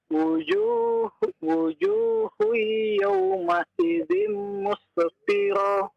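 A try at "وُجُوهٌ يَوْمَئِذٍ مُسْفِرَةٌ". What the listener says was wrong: Wujuhui. Idgham bi gunnah ya. Wujuhui yawma idzin musfirah.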